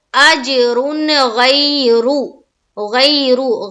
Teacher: ہم نون کی آواز کو صرف اور صرف ظاہر کریں گے اور جلد پڑھ کر نکلیں گے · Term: اظہار